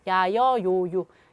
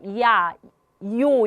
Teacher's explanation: 얘는 반모음 이와 관련이 있습니다. 그래서 이에서 아로, 뭐 이에서 오로 이런 식으로 소리가 이야, 이요 이런 식으로 옮겨가면서 발음이 되는 거거든요. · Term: 이중모음